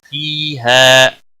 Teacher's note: فِيهَا فی یا مدہ ہے، 1 الف کے برابر کھینچ کر پڑھیں گے۔ ہا الف مدہ ہے، 1 الف کے برابر کھینچ کر پڑھیں گے